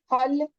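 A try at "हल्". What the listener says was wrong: Hull, correct.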